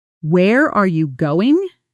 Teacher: Notice how are and go get the strongest emphasis while the smaller words almost disappear. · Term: sentence stress